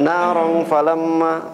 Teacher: Ikhfa itu dia antara izhar dan idgham ya. Naram 2 harakat ya. Ketika ikhfa itu 2 harakat.